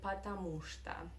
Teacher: We write 2 words, потому, space, что. But we pronounce these 2 words together in Russian like one word.